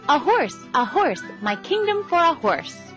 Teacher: the next syllable a unstressed is followed by horse which is stressed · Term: I AMS